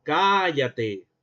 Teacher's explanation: estoy alargando las vocales y eso no cambia el significado de la palabra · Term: alargamiento vocálico